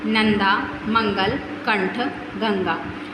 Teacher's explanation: अनुस्वार का उच्चारण स्वर के उपरांत किया जाता है तथा इसका उच्चारण करते समय नाक से ध्वनि का संचार होता है।